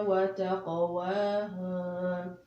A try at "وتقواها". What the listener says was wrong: Don't stretch the ha. The ha is not to be stretched.